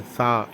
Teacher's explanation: நாக்கை நீட்டி மேல் பல்லை அந்த நாக்கின் மீது அழுத்தாமல் லேசான காற்றுடன் சா என்று கூற வேண்டும்